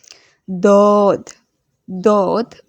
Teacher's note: দদ, দদ বাম পাশের মাড়ির দাঁতের গোড়া হতে মোটা ভাবে বলতে হবে।